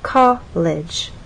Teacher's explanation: with college two syllables our voice sort of steps down colge from one level to the next from a higher level